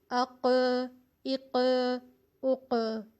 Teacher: قوف کو ہم ساکن کر کے پڑھیں گے تو قلقلے کی ادائیگی ہوگی، آواز پلٹ کر واپس آئے گی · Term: قلقلہ